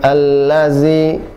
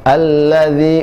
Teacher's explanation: ujung lidah dengan ujung gigi seri atas cukup dipertemukan tanpa harus ditekan